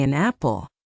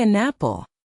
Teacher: a word that ends in a consonant like an will grab onto a word that starts with a vowel like apple. We do not say an apple.